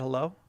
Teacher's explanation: I didn't pronounce the H